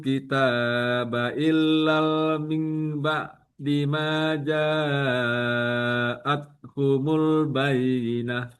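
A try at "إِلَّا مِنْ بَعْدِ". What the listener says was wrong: Illa tidak ada alif lam. Utul kitab illa mim ba'di ma ja'athumul bayyinah.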